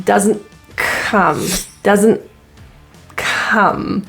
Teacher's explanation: Doesn't. So the T in this word is pronounced as a glottal T. Doesn't. So there is like a nasal and a glottal stop. · So there is like a nasal and a glottal stop. And it's linked to come.